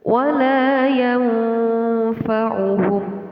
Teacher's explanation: Terdapat nun mati bertemu dengan huruf fa dinamakan hukum bacaan ikhfa. Ikhfa artinya samar.